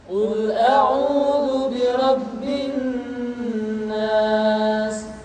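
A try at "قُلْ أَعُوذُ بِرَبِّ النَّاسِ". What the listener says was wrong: Tidak boleh dibaca Qul a'udzu birabbin nas, tetapi ditahan suaranya ketika mengucapkan nun tasydid seperti ini. Qul a'udzu birabbin nas.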